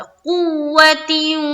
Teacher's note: जब कू करेंगे तो सख्ती बनाएंगे वाव के ऊपर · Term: तशदीद